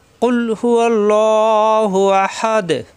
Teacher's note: কুল জিহ্বার গোড়া থেকে উচ্চারণ হবে, কুল যেন না হয়।